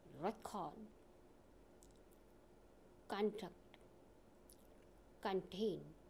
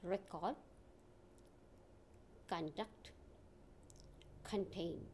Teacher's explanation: These words have stress on first syllable when they are nouns or adjective. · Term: functional stress